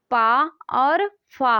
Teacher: तो अघोष ध्वनि जो है पा और फा है